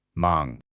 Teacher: the adjective mang, which means busy, and that one has a second rising tone.